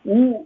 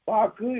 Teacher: உ என்று சொல்லுகிற போது இதழ் குவியும். பாக்கு என்று சொல்லுகிற போது இதழ் குவியாது.